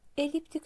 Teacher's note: Eliptik sözündə düşür vurğu sonuncu hecaya.